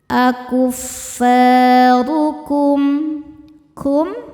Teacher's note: Huruf ro dibaca secara tafkhim karena ro berharokat dhammah. Cara bacanya ro dibaca tebal.